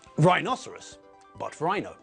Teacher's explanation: Of course, the stupid thing with rhinoceros is the fact that everyone normally says rhino. And when we abbreviate the word, the stress moves from the second syllable to the first